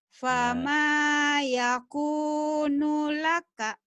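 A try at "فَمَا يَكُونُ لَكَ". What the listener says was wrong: Tapi pendek nu-nya. Nu-nya pendek. Fama yakunu laka.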